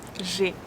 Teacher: It's a closed sound, so we have to smile and to close our mouth a bit. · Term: est fermé